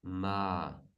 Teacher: So the low starts lower and goes even lower, lowest. So ma. It's parallelly a bit lower than the middle tone.